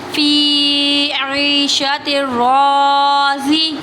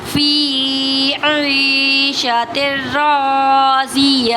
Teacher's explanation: گول تا کو وف کی صورت میں ہا ساکن سے بدل دیں گے تو یہاں ہا، گول تا جو ہے ہا ساکن سے بدل دیں گے تو ہا ساکن ہوگا، تو ہا کی آواز آئے گی، جیسے کہ فی عیشۃ راضیہ۔